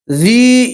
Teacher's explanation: یہاں یا مدہ اس لیے آپ ایک الف کے برابر کھینچیں گے